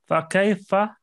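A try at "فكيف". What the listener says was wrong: Fakaifa, little bit Fakaifa. Longer.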